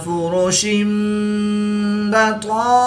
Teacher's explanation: 2 ज़ेर की तनवीन के बाद हर्फ बा है, तो यहाँ पर इक़लाब होगा। तनवीन को मीम से बदलकर गुन्ना ज़मानी करके पढ़ेंगे।